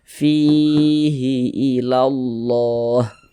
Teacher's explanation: Ada huruf ya, ada tanda sukun, ya sukun, sebelum ya sukun ada ini harokat kasroh atau tanda baca kasroh, maka huruf yang memiliki harokat kasroh dibaca panjang, sehingganya fi kita baca panjang. Mad tabi'i panjang 2 harokat.